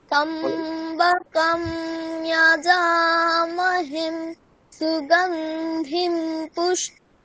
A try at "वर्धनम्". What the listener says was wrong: হ্যাঁ, বর্ধনম নয়, শেষে ময় হলন্ত থাকলে কি হবে? বর্ধনম। বর্ধনম নম মা।